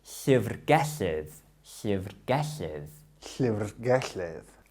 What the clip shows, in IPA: ɬəvrˈɡɛɬɪð